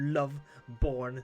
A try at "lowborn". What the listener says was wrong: Lowborn, not loveborn. Low. Low. Low. Low, not love. No, low. Low. You do not pronounce W.